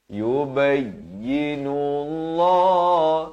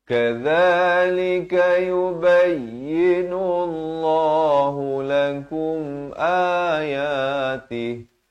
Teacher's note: Dan lafz jalalah di sini dibacakan dengan tebal 2 harakat.